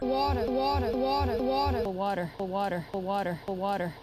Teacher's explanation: drops the R in water, whereas doesn't.